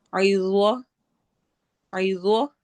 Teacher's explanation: ضوا کو موٹا بھی پڑھنا ہے اور ساتھ ہی نرم بھی